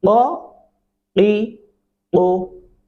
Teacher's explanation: क़ाफ गले से अदायगी होती